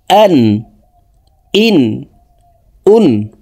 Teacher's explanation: হলকের শুরু থেকে হামজার উচ্চারণ করব